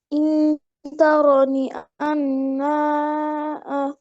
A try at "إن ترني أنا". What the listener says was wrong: আনা আনাতে মাদ হবে না হ্যাঁ আনাতে মাদ হবে না এইখানে এই আনাতে মাদ হবে না ঠিক আছে আনা মুতাকাল্লিম মাদ নেই আচ্ছা তো এখানে একটা রুলস আছে আমরা এর আগেও বলেছি যেমন